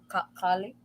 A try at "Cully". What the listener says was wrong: Cully. Cully, not Collie. Put a U instead of an A.